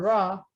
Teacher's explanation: it's the tip of my tongue approaching or interacting with the alveolar region. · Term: retroflex R